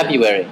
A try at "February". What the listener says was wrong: February, but it's not. February, because there's an R after the B. You say February.